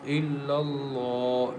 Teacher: lamb is thick and heavy because lamb comes after fata letter